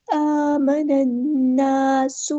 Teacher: जो है वो लाम शम्सिया है तो इसको पढ़ेंगे नहीं, आमनन्नासु, नून पे गुन्ना हो रहा है तो इसको अच्छे से एक अलिफ के बराबर रुकना है , आमनन्नासु, ऐसे जल्दी से अदा नहीं करना, आमनन्नासु, अलिफ मद